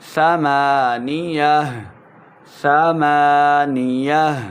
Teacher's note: ہا کو ساکن بھی کریں گے، ہا کی آواز آنی چاہیے